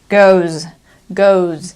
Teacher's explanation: it's not a really strong Z it's just like a little Z goes goes and you should be able to feel it here